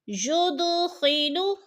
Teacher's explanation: ید کی دال ساکن ہے اور حروف قلقلہ میں سے ہے تو ادھر ہم نے قلقلہ کرنا ہے، یعنی لفظ کو ہلا کر پڑھنا ہے